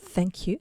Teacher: Soit tu fais th, un petit peu comme un f en mettant la langue entre les dents comme dans thank you.